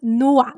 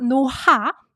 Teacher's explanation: 히읗 받침 becomes silent, and 노아 is pronounced like 노아. These characters are pronounced 노아, not 노하. There's no 흐 sound, right? Just 노아.